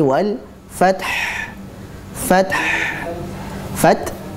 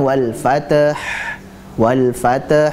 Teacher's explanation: fath kita hentak kemudian lari ke ha.